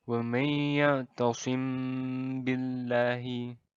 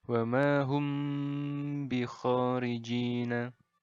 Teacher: Jadi bagian mim bertemu baknya ini ditahan dulu, didengungkan sepanjang 2 harokat. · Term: ikhfa syafawi